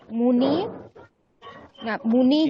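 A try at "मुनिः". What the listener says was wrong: মুনিহি বিসর্গ উচ্চারণ করো, হ্যাঁ।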